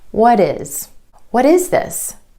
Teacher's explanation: you're going to put in that D sound or flap T